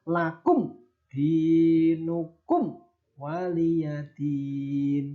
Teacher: ada mim sukun bertemu dal disebut idhar syafawi, maka harus dibaca jelas.